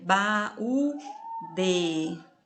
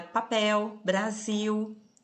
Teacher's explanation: A gente escreve a palavra com L, mas o som é de U. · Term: pronunciado como U